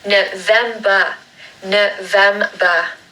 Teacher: with November, we're going to make a schwa sound at the beginning and at the end. So it's n, vem, so the second syllable is stressed like the other two.